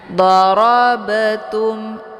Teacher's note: ba-nya dipantulkan dengan pantulan ringan. Darabatum ada bunyi be. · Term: qalqalaf sura